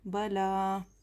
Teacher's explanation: खड़ा ज़बर बराबर है अलिफ मद्दा के, एक अलिफ के बराबर खींच कर पढ़ेंगे। बला, क़ालू बला।